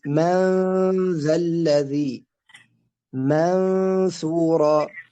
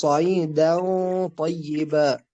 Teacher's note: فإنا ننطق النون هنا بصفة بين الإظهار والإدغام، وهو صفة الإخفاء بين الإظهار وبين الإدغام. نقول مثلا من ذا الذي، منثورا، خلاص، صعيدا طيبا.